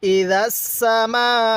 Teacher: এই দালের উচ্চারণটা আমরা নরম করে করব এবং সিনের উচ্চারণটা একটু শক্তভাবে করব